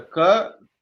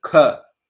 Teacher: But ka means you have to make an effort from your stomach, from your diaphragm, and expel more air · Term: Mahaprana